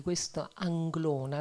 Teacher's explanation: non c'è neanche una consonante occlusiva, non c'è un suono esplosivo, è tutto fluido, c'è la N, la L, ci sono delle belle vocali aperte e quindi è un nome che veramente esprime una grande sonorità, una sonorità fluida, non no, delle consonanti forti, taglienti.